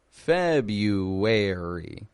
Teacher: It's a sneaky little R, the first R in February. The average American does not pronounce the R in February.